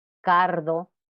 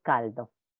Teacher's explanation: debe evitarse que esta l relajada llegue a convertirse en una pronunciación de r